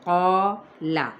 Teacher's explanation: قال الف مدہ کے ساتھ، قاف بھی پر آلریڈی ہوتا ہے تو الف اس کے ساتھ ہی کیا ہوگا، پر ہو جائے گا۔ قال، لام کی حرکت کو کھینچنا نہیں